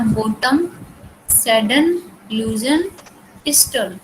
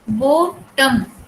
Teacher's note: वावल जो है second syllable में वो प्रोनाउंस नहीं हुआ है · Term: सिलेबिक कॉन्सोनेंट